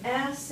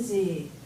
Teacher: you feel vibration vibration so you probably realized by now that s is voiceless you didn't feel any vibration and Z is voiced because you felt the vibration